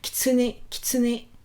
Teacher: si vous entendez bien comment je le prononce, le I il est presque muet, le U est presque muet aussi. Et limite j'insiste plus sur le né final.